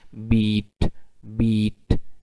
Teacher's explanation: For example अगर आप produce करेंगे साउंड बीट बीट, और इसमें जो ई वावल है ई, इसमें आमतौर पर अगर आप थोड़ा सा गौर करेंगे, मिरर के सामने जाएं, आप देखेंगे कि आपकी टंग जो है हाइट के लिहाज से वो बिल्कुल पैलेट के करीब चले जाएगी और वो आगे को भी मूव करेगी। इसीलिए ये जो ई वावल है, ये वाला ई वावल, ये हाई फ्रंट हाई वावल इसे कहा जाता है।